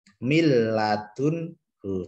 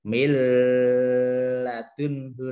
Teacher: Cara bacanya tidak dengung, tidak ditahan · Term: idgham bila gunnah